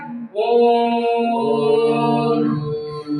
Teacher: और इसमें जो है 3 मात्रा लगेगा, जैसे मैंने बताया ओम बोलेंगे, ओम में 3 मात्रा लगेगा